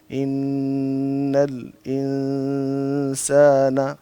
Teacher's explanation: بیٹا جو غنہ ہے جہاں نون کے اوپر شد آ جاتی ہے تو اس کو تھوڑا لمبا کرتے ہیں